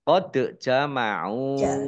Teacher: Qad jama'u dal sukun ya dal sukun kolkolah dibaca memantul ditampakkan pantulannya.